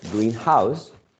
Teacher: if you uh stress the second element green house you're talking about a house which is or has been painted green right it could be any house painted green not uh a